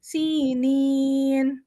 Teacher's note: نین کیونکہ اور بھی لمبا اس لیے ہو رہا ہے کیونکہ ہمارے پاس ڈبل جزم آ رہا ہے